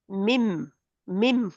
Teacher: نون جو ہے یہ بدل جائے گا میم جزم والی میم